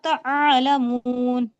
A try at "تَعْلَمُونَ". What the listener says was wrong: عالمون نہیں، صحیح پڑھیے تعلمون. آپ تعالمون کہہ رہیں گے، عین پر دیکھیے صرف جزم لگائے، زبر نہیں ہے. تعالمون کی جگہ کہیے تعلمون.